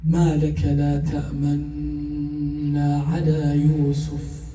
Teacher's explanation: So it becomes ta'manna, that's what you hear, but we signal with our lips the dhamma. That's the ishmam.